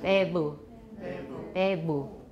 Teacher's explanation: Let's try that with be and u, with a voiced labiodental flap between it.